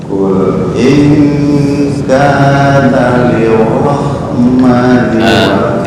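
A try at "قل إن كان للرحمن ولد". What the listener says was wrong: Bukan lirrah, kurang tafkhim tuh. Lirrah. Qul in kana lirrahmani waladu.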